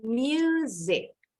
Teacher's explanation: Jadi bacanya ada bunyi huruf Y dan huruf S-nya bunyinya jadi Z.